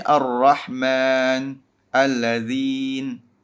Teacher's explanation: Hamzah Wasl harus diucapkan 'a'. Ya. Namun, 'lam' diasimilasi. Karena itulah disebut 'idgham syamsi' atau 'lam syamsiyah'.